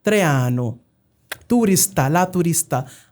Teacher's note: A speaker of Spanish would always be using more of the dentals like Traiano, turista, la turista, but never the retroflexes.